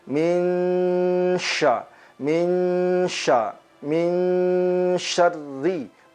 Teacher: disertai dengan gunnah, suara yang mengalir ke hidung kita dan kita tahan